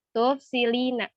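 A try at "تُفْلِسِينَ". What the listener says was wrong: Diperhatikan tuh urutan hurufnya. Maksud tufsilina, tufsilina. Ini lam dulu baru sin. Tuflisina. Tahu dari aflasa.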